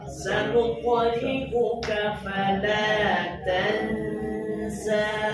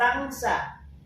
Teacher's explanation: Suara hidung ada nggak? Ada. Makanya ikhfa itu tahan dua harokat.